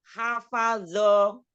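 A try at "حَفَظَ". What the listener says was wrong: hafadho, tidak zo, tidak bo ya, zo ujung lidahnya ada di ujung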